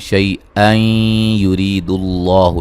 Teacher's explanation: نون تنوین کا ادغام مع الغنہ ہوگا، اور را کو باریک پڑھیں گے. ری یا مدہ ہے، اللہ لفظ اللہ کو موٹا ادا کریں گے، اس سے پہلے حرف پر پیش ہے.